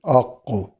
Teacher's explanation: زبان کی جڑ اور برابر کا تالو، یہاں سے قاف ادا ہوتا ہے۔ قاف میں کلکلا بھی ہے اور یہ مستقل موٹا حروف بھی ہے، آق۔